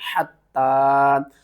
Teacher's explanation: حا کو آپ نے حلق کے درمیان والے حصے سے ادا کرنا ہے